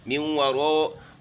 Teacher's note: را موٹی کرنی ہے، ساتھ اس میں الف ہے وہ بھی موٹا ہوگا